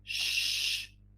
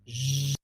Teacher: So it's exactly the same place, but we incorporate the vibration of the vocal cord.